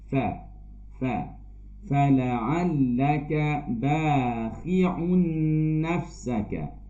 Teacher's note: Fa kita guna gigi atas dan juga bibir bahagian dalam, bibir bawah bahagian dalam.